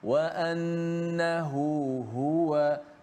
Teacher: Jangan kita baca wa annahu wa anna wa ha tak bunyi. Bunyi macam satu wau saja, satu ha saja bunyi kerana tenggelam ha yang kedua dalam huruf mad sebelum tu.